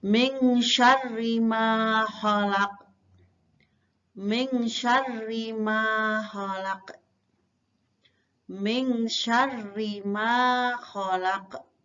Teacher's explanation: Di sini ada nun sukun bertemu shin. Ini adalah termasuk bacaan ikhfa hakiki. Dibaca samar-samar.